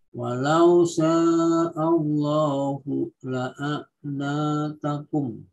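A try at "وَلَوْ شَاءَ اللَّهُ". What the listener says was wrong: Walau sya'. A-nya enggak boleh Allah, enggak boleh O, tapi A, Pak. Walau sya'allahu. Punya ainnya perjelas, Pak. Itu masih hamzah, Pak. Di la'anatakum itu lebih ke hamzah. La'anatakum.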